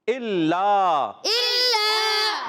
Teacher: لام مشدد ذرا رک کر ادا کریں گے. لام الف زبر لا، علی مدہ ہے، ایک الف کھینچنا ہے.